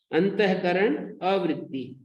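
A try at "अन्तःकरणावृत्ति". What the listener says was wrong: अंतःकरणावृत्ति लिखा है, दीर्घ है।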